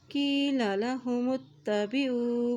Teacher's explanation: وَإِذَا ذال کو نرمی سے ادا کریں گے، وَإِذَا قِيلَ لَهُمُ اتَّبِعُوا، میم کی پیش کو تا کے ساتھ ملائیں گے، تا کے پر شد ہے